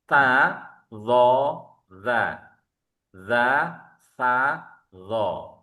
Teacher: Jadi enggak ada z, enggak ada desisnya.